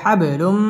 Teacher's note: বা কলকলার হরফ ধাক্কা দিয়ে পড়তে হবে